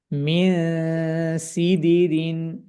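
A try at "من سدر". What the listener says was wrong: মোটা হবে না গুন্নাটা পাতলা হবে মিন সিদিরিন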